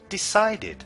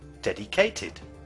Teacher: the past simple ed ending is pronounced id, and we add another syllable